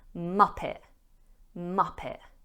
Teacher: we usually drop the final T on this word